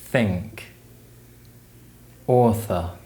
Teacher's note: produced by restricting the flow of air between the tongue and top teeth